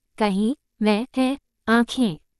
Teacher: जिन स्वरों की ध्वनि मुख के साथ साथ नासिका से भी निकलती है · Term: अनुनासिक स्वर